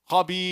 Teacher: That's ya'ul mad, which comes from the jawf.